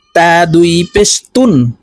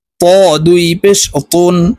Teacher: তা পাতলা ভাবে উচ্চারণ হবে আর এই ত হরফ মোটা করে উচ্চারণ করতে হবে